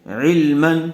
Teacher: تنوین کے بعد حروف حلقی میں سے عین آیا ہوا ہے، اس لیے بغیر گننے کے جلد اظہار کر کے پڑھیں گے. عین لام زیر عل، میم دو زبر من، علما.